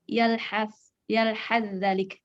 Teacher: za dan sa makhrajnya sama, keluar dari ujung lidah, tempel ke gigi seri atas. Itu sama makhrajnya. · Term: mutajanisain